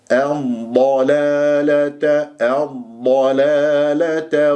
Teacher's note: لازم اسمع صوت الضاد الساكنه رخاوه واستطاله · ما الطبيعي حركتين، الضلالة اللام الشمسية اللي جاء بعدها حرف مشدد، الضاد مشددة بفتح مفخمة مرتبة ثانية الضاء، ولازم أسمع صوت الضاد الساكنة رخاوة واستطالة